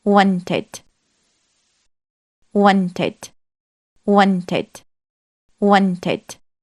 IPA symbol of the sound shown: ɪd